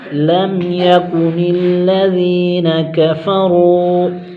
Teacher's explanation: لم پر اظہار شفوی ہوگا، غنہ نہیں ہوگا، قاف کو باریک کریں گے